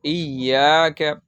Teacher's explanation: تو آپ لوگ یہاں پر دیکھ سکتے ہیں کہ یا پر جزم یا پر تشدید آنے سے یا کے اوپر تشدید آنے کی وجہ سے یہاں پر سختی سے پڑھی جا رہی، کھینچی نہیں جا رہی